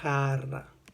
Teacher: Le J en espagnol, J, a un son très pareil à la R française, prononcée de façon raclée, comme quand on ronfle.